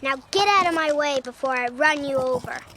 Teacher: Hear that soft D sound in get out of?